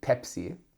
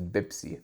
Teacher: in Arabic there's no P sound like P so we will um uh replace it with a B